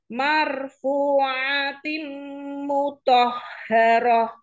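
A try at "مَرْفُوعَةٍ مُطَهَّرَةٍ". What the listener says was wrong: Coba ainnya. Ain, ain. Ain. Kurang masuk ya. Dorong. Katup epiglotisnya didorong. Dengungnya tim panjang ya dengungnya.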